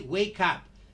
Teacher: The K is transferred into the next word